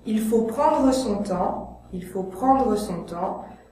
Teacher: Dans la phrase « Il faut prendre son temps », je prononce le E à la fin de « prendre » car c'est la règle des 3 consonnes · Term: E muet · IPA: [ə]